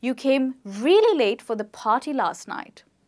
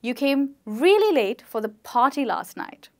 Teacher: if you noticed I stressed on the words party and really